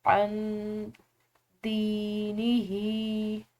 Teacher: दाल को खींचेंगे क्योंकि आगे या साकिन है